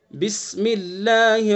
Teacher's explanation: اعوذ باللہ اور بسم اللہ دونوں کے اللہ کے لام کو باریک کرنا ہے